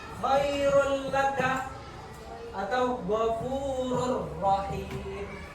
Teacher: Jadi langsung ya, nak, dimasukkan ke huruf la-nya tanpa didengungkan. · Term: bila gunnah